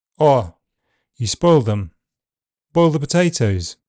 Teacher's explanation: In fast speech, the second element can be more central when dark L follows it. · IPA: /ɔɪ/